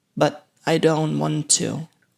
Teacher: So we have a schwa sound and the final T is stopped. Don't is pronounced with a stop T as well.